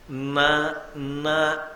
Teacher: నాలుక చివర భాగము దంత పంక్తి యొక్క వెనక తాకితే తప్ప నకారము పలకదు